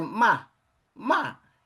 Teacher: a primeira entonação, né, pra primeira má é uma entonação assim, digamos que sem muita variação